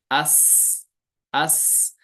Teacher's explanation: فوراً آواز بند نہیں ہوئی اور فوراً سخت بھی نہیں ہو گئی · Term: صفت رخاوت